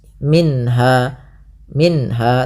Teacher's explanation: Kemudian pada lafal minha ada bacaan izhar halqi, yaitu suara nunnya dibaca dengan jelas.